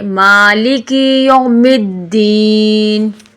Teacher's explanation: غلطی، مالک یوم الدین پڑھ لیتے ہیں، لیکن صحیح طریقہ ہے مالک، الف لمبا پڑھے